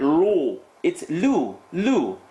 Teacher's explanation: The qaf is heavy, definitely, but the lam is light. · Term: light letter